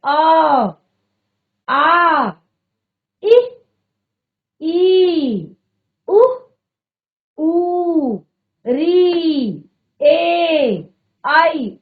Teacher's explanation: वायु कहीं पर भी अवरुद्ध नहीं हो रही है, कहीं पर भी एक तरह से मुख में वायु हमारे रुक नहीं रही है, बाहर की तरफ सीधे आ रही है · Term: स्वरों